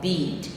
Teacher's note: that e is a high front unrounded vowels